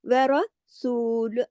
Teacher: रॉ को मोटा, क्योंकि रॉ पे जबर है